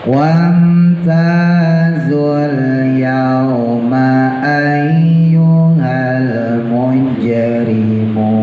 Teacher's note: jangan lupa jimnya qalqalah ya, mujrim qalqalahnya sugro, pantulannya setengah.